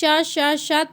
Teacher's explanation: तो अघोष क्या है देखते हैं, इन ध्वनियों के उच्चारण में स्वर तंत्रियों में कंपन या झनकार नहीं होती है।